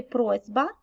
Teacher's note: у слові просьба сь у наслідок одзвінчення вимовляємо як зь